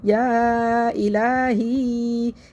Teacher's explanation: لیں گے اغثنی یا الہی یا الف سے پہلے زبر ہے یا مدہ ہے لیکن آگے حمزہ آ رہا ہے اس کی وجہ سے یہاں پہ مد بن گئی تو اس کو ہم 3 سے 4 الف پر کھینچ کے پڑھ لیں گے